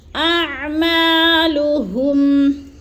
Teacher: جو ہے حمزہ اور عین میں ہم نے فرق کرنا ہے، حمزہ حلق کے آخری حصے سے حمزہ، اور عین حلق کے درمیانی حصے سے